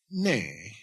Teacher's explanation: it's high tone because there's a prefix letter on a nasal